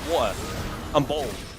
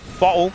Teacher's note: I'm from the UK, you know, we leave out T's all the time